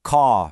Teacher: In a lot of Britain, the R at the end of a word just kind of disappears. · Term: non-rhotic